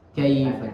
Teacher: Tidak ya, karena di situ termasuk bacaan lin. Tapi lin itu cara membacanya seakan-akan dipanjangkan seperti mat. Kaifa, karena dia mengalir saja. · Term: huruf linnya